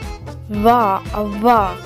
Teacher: The next one is Vavu, which makes the V sound or the W sound. However, the V is like a voiced labiodental approximant, i.e. the bottom lip and the upper teeth don't exactly touch